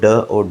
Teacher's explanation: उत्क्षिप्त व्यंजन जो होता है वो ड और ढ